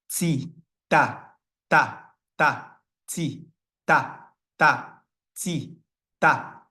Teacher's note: When the tip of the tongue touches the upper teeth from the inside, the ta sound is produced. It's as though you are pronouncing the beginning part of the English word T.